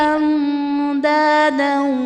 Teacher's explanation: نون ساکن کے بعد حروف اخفا میں سے دال ہے تو یہاں پر اخفا کا قاعدہ ہوگا، یعنی نون ساکن میں ہم غنہ کر کے پڑھیں گے